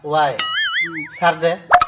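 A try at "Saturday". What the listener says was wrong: ফ্রাইডে রে কইতাছো ফারডে, স্যাটারডে রে কইতাছো সারডে।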